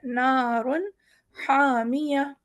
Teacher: را بھی ہمارا موٹا ہو رہا ہے